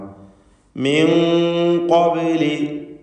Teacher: മിൻ എന്ന സാക്കിനത്തായ നൂനിനെ ഇഖ്ഫാ ഹഖീഖി നൽകി മറച്ച് മണിക്കണം. ഖാഫിന് മുമ്പിലായതുകൊണ്ട് തഫ്ഖീമും വേണം.